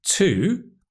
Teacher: It can be to, which is the strong form when we stress the word, but it can also be to.